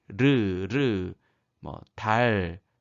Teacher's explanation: 혀끝이 윗잇몸에 닿으며 또 거기를 가볍게 두드리듯이 내는 소리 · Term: 흐름 소리